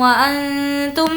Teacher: یہاں پر اخفا ہوگا، نون ساکن کے بعد تا ہے۔